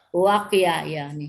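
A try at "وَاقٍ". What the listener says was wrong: Wak, bukan wakoya, wak, ya.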